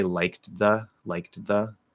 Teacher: change the voiced th and the into a dental d which is a very common thing that happens